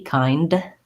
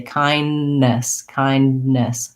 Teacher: I stop the air and then start again on the N. So if you think about leaving out the D, just make sure there's a break between your N's, kindness, kindness.